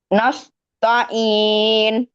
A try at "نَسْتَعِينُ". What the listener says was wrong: இப்பதான் சொன்ன 4 5 6 அளவுக்கு நிட்டு நம்ம திரும்பி நஸ்தஈன் என்ன சரியாது. எத்தனை செகண்ட் விடணும்?